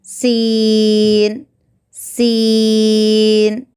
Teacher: زبان کی نوک کو نیچے کے دانتوں کے اوپری حصے کو لگانے سے سین ادا ہوتا ہے